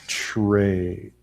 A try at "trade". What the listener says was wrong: No. Okay, so what you're doing for the T, you're putting your tongue on